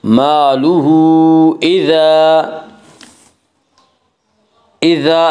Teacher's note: مالہ اذا، اذا الف مدہ، الف ہمیشہ مدہ ہوتا ہے، الف سے پہلے ہمیشہ زبر ہوتا ہے، الف مدہ کو ایک الف کے برابر کھینچ کر پڑھیں گے